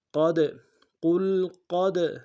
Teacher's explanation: ساکن کو نہ نہیں ہوگا، قاف کو موٹا ادا کریں گے، قاف کو دال کے سامنے لانا ہے موٹا ادا کرتے ہوئے، دال حرف قلقلہ میں سے قلقلہ کریں گے۔